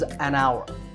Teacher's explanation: The first sound is an ow sound, which is a vowel sound